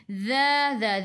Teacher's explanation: hujung lidah keluar pada gigi depan